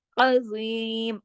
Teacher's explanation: عین کو حمزہ کی طرح نہیں پڑھنا، عین کو حلق سے ، عین حرف ہلکی ہے نا، عظیم، اب زو یہ موٹا